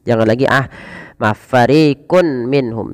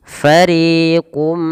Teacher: Nah, masukkan nunnya kepada huruf mim, atau tanwinnya masuk kepada huruf mim dan diganti bunyi suara mim. Jangan lagi fariqun minhum, tapi langsung mengasuk kepada mim. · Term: idgham bi gunnah